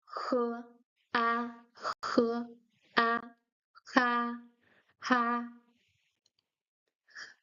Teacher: The H in Chinese is pronounced He and it's voiced, so you can hear it.